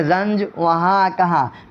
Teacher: نون گنہ جو ناک سے پڑھا جائے